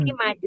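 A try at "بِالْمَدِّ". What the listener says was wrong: Madi, dalnya double madi. Kalau bil madi itu enggak dalnya satu, ini dalnya dua, madi.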